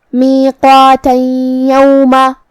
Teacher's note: ہم یہ آیت کو اگلی آیت کے ساتھ ملا کے پڑھے تو جو کہ کلمت یوم میں حرف الیا حروف الادغام بغنہ میں سے ہے، اور ادغام کا معنی ہے حرف کو حرف میں داخل کرنا. تو ہم یہ تنوین کو یا میں ملا کے غنہ اور تشدید کے ساتھ یہ حکم کو ادا کریں گے